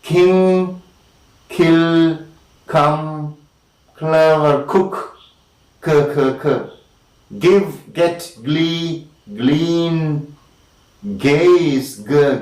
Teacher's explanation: the back of the tongue is lifted up against the soft palate or velum